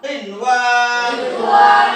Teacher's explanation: नून साकिन के बाद वाव आया है, लेकिन एक कलमा में आने की वजह से यहां नून साकिन वाव में इदगाम नहीं होगा, यह इजहार होगा